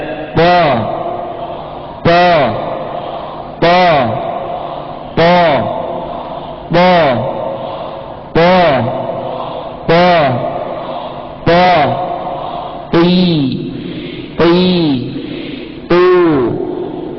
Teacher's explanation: Lihat ketika macam huruf th lidahnya yang belakang naik ke atas ya.